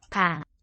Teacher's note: So 방, this word for room, there's a little bit of aspiration, a little bit of air coming